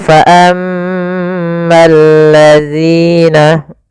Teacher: Sehingga ini langsung ke huruf lam yang ketiga ya. Al ketemu lam maka bergabung menjadi lam yang ditasydidkan. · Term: alif lam syamsiyah